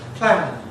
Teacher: Simple, straightforward rule. /d/ after voiced sound. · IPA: /plænd/